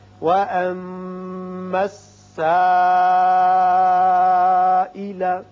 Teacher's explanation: یہاں مد متصل ہے، 5 حرکات طویل کریں گے.